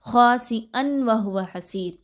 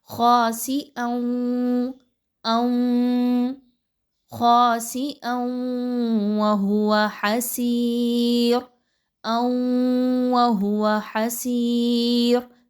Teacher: نون کی آواز آپ نے بالکل بھی نہیں نکالنی، آپ نے ڈائریکٹلی حمزہ کی دو زبر کی تنوین کو واو کے ساتھ ملانا ہے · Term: ادغام